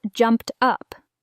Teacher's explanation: Blend the sounds so it's jumped up. Try not to overpronounce P and T.